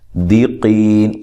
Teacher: قاف کو موٹا، قی یا مدہ ہے